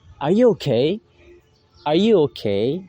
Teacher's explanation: The word okay in the sentence is given rise intonation. It's because this sentence emphasizes a yes or no type of question.